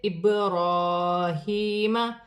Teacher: را پر کھڑی زبر ہے، را موٹی بھی پڑھی جائے گی، ایک الف کی مقدار کھینچ کر بھی پڑھی جائے گی۔ ہا کے نیچے کھڑی زیر ہے، اسے بھی ایک الف کی مقدار کھینچ کر پڑھا جائے گا۔